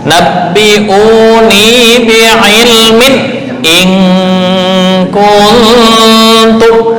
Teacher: Nah, bi'ilmin jangan dengung.